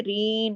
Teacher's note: را یا مد کے ساتھ ہے، رین، اس طرح ہم نے کھینچا